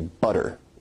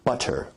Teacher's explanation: Now notice, where we write it with two T's in English, that your tongue is producing a tap sound there, rather than a full stop or plosive sound. So in North American English, you say butter. Now, as compared to in received pronunciation, where you say butter, that involves a full t stop.